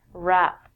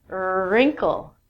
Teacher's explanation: We don't say the w when we say this word rap.